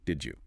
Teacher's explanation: Instead of making a clean D followed by a clean Y, the mouth meets in the middle and creates a completely new sound. The africate J.